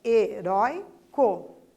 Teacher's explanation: O rói é a sílaba mais intensa, certo? Então, ali perdeu o acento. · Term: paroxítona